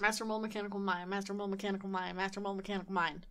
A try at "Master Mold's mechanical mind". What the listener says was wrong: You didn't say Master Mold's mechanical mind. You said Master Mold, not Master Mold's.